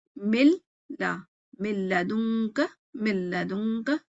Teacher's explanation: اس میں بھی دیکھیں 2 الگ الگ ہیں، بٹ لام اس کے ساتھ ملنے میں نون کی غائب جو ہے نا، بالکل نون ٹوٹل غائب ہو گیا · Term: ادغام بلا غنہ